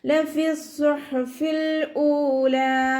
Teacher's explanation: സ്വാദിൻ്റെ മഖ്റജ് നമ്മുടെ നാവിൻ്റെ അറ്റം താഴെ മുൻപല്ലിൻ്റെ ഉൾവശത്ത് വെക്കുക. അതോടുകൂടി തന്നെ നാവിൻ്റെ ബാക്ക് നല്ലോണം മുകളിലേക്ക് ഉയർത്തി കൊടുക്കുക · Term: തഫ്ഹീം